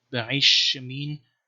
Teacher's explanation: And one thing you can see here is, for example, this name Be'aish Shemin, which should be Be'ail Shemin, but the lamad is assimilated to the sheen